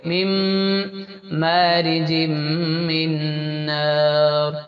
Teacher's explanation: نون کو اس کے بعد والے حرف میں ملا کے ناک سے پڑھیں گے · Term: ادغام مع الغنہ